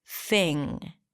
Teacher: And notice how I said thing without popping my g sound at the end, because it ends with an ng, so you don't really release the g here. Thing.